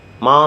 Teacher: with a falling tone ma means to skull